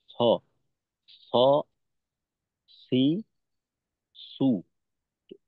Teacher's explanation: এইখানে কিন্তু আমি জিভার আগা সামনে তার বরাবর উপরে তালুর সঙ্গে লাগাইলাম